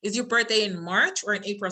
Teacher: So it's rising, rising, rising, and then falling. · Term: Non-final intonation